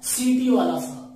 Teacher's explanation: सीटी वाला सा का उच्चारण स्थान तालु होता है